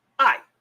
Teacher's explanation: it has a fourth tone so it's it's pronounced I your a is going to drop here